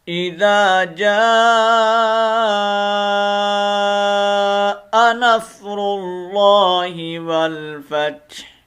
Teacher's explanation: صرف ہا کی تھوڑی سی آواز ہم نے نکالنی ہے، فا کو تا کے اوپر کھینچ کے جب ماریں گے تو ساتھ تھوڑی سی ہا کو ہم نے ملانا ہے، اور ہا کی آواز کو واضح کرنا ہے